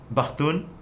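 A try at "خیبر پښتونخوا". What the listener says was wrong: No, like with a P. Pakhtun. Khwa. Khwa. Khyber Pakhtunkhwa. Khwa. Yeah, just Khyber Pakhtunkhwa.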